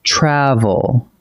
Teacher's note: The emphasis sits on the first syllable, not the last.